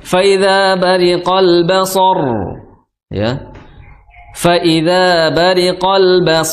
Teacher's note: RO di akhir kata itu harus tebal harus tebal karena huruf sebelumnya itu fathah